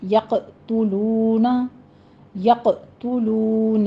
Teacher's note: یقتلون میں قوف کے پر قلقلہ کریں گے اور قوف کو پر پڑھنا ہے